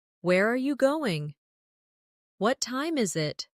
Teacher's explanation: for information questions, those starting with who, what, when, where, why, how. The tone often falls at the end. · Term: falling tone